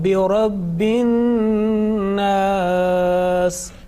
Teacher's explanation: Now remember, this is the nasal sound. You are making gunna here on an-nas